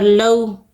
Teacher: لو میں واو لین ہے، نرمی اور جلدی کے ساتھ پڑھیں گے